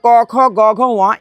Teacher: এই পাঁচটা ধ্বনির উচ্চারণ স্থান কিন্তু কন্ঠ একই জায়গা